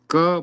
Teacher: क बोलते हैं तो जीभ का तालु के साथ स्पर्श होता है